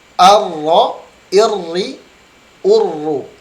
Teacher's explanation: huruf ra tidak ada unsur hidungnya, tetapi dia ada getaran